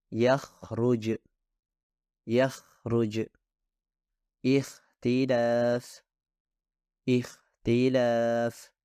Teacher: seharusnya suara Ko berasal dari mulut yang lebih dalam bahkan dari bagian terdekat tenggorokan